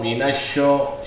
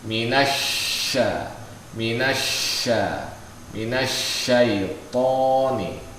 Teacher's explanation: Ya, jadi dia jangan sampai dia suara o, syo begitu. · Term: tarkik